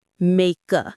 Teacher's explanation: The K sound at the end of make links right into the a.